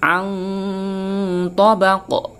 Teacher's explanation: Ini berharokat kasrotain, tapi karena dia terletak di akhir ayat dan dibaca waqaf, maka menjadi berharokat sukun. Maka membacanya harus dipantulkan. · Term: qalqalah kubra